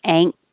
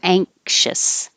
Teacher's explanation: you can go to the k position ankh but you're not really releasing